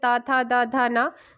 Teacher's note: दांत और जीभ के स्पर्श से बोले जाने जो वर्ण होते हैं उन्हें दंत्य ध्वनि के अंतर्गत रखा जाता है · जिनका उच्चारण ऊपर के दांतों पर जीभ लगने से या लगाने से होता है